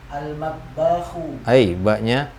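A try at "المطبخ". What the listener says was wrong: Jangan jangan dipanjangkan. Kita ngikuti nada Indonesia memang. Suka jadi panjang-panjang ini yang terakhir.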